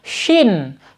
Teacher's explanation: Shin, ya. Karena shin itu sifatnya al-hams, mengalir udaranya ya. Yang nggak boleh pakai tha, nggak boleh pakai sa ya.